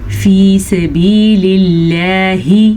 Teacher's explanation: اللہ کا نام ہم نے باریک پڑھا ہے کیونکہ لفظ اللہ سے پیچھے زیر ہے. فی، فا زیر یا، فی سین زبر سا، با زیر یا بی، فی سبی، 2 یا مدہ ہیں تو دونوں کو کھینچ کے پڑھیں گے.